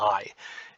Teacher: it begins low and it ends High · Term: diphthong